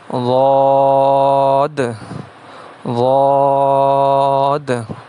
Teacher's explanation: تو ضاد کا مخرج جو ہے انہی داڑھوں کی جڑ سے ادا ہوتا ہے، یعنی زبان کی کروٹ، یہ دیکھیں زبان کی کروٹ ہے بائیں طرف کی، زبان کی کروٹ جب اوپر والے داڑھوں کی جڑ سے لگے تو اس سے ضاد ادا ہوتا ہے